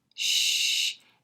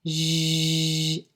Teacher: Sh, voiceless, just add the voice, zh, and you get the zh, as in decision.